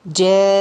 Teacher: we are elongating on the noon, the full ghunna, in order to show that we have 2 noon. So if you didn't show the full ghunna, it is like you are removing a letter from the word.